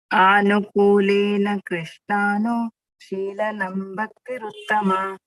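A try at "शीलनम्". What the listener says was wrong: Here, Shilanam. Again, there is an anuswar here. So that also we have to emphasize.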